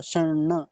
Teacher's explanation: पहला णकार आधा है तो हल्का सा ही आएगा, शर्ण। अब उनके लिए तो बड़ी बाधा हो जाएगी जिनको णकार का उच्चारण करने में समस्या होती है, जो इसको न बोलते हैं और ड जैसा बोलते हैं, ड।